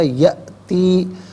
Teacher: حمزہ ہے، اسے جھٹکے کے ساتھ پڑھا جائے گا